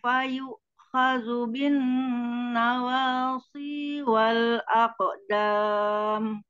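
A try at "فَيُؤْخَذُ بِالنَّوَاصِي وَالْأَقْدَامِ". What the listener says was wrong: Nawalsi, jangan pakai sin. Si. Khodu. Khodu.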